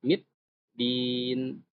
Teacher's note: Huruf dal itu syiddah. Maka dia mid din. Dia harus hilang sejenak suaranya.